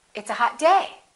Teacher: in english we stress the noun more in a lot of languages the adjective gets more stressed